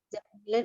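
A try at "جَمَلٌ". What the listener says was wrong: Jamalun. Mimnya fathah ya Umi.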